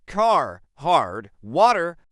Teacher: American English is what we call rodic. This means Americans pronounce the R sound wherever it appears in a word.